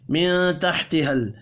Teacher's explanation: نون ساکن کے بعد تا ہے اخفاء حقیقی ہوگا